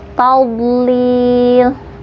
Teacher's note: Fi tawlil, itu gak boleh mantul tapi harus mengalir. Huruf dha itu sifatnya istitolah, memanjang ya. Tawlil, memanjang dari si tepi lidah belakang ke depan